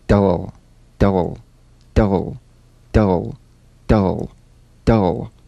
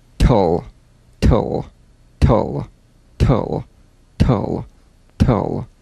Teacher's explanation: DL and TL, cognates, voiced and unvoiced, tongue tip to gum ridge consonants. Bounce the D or T drum beat off the gum ridge and return there immediately for the L.